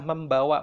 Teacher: harus berubah menjadi m karena m itu bunyi bilabial juga sehingga yang paling cocok adalah membawa · Sama dengan meng bertemu dengan kata bawa. Bawa B-nya itu bilabial, maka mengnya bunyi dengungnya harus berubah menjadi M karena M itu bunyi bilabial juga.